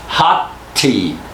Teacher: sounds like this hot te notice we don't say hoty and we don't say hot tea with two te's now we don't say that we say hot tea as if it was one long tea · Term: blending